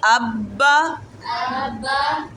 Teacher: جیسے پہلا والا حرف کیا زبر ہے نا، وہ الف ہے نا، آگے مثال میں دیکھیں، اس کو آب با بھی نہیں پڑھیں گے، الف بھی نہیں کھینچیں گے، با بھی نہیں کھینچیں گے